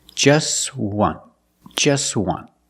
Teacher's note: We see the T is between consonants, so it's silent.